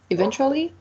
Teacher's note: It has 4 syllables, and the stressed is the second one.